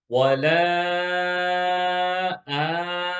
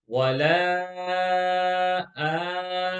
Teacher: the first word has a stretch, the second word has a stretch and a mim shadda gunna.